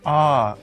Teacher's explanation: The third tone falls first and then rises. Ah, like the track of a roller coaster.